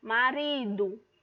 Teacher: o ri é minha sílaba tônica e a penúltima sílaba da palavra. Então, ela é paroxítona.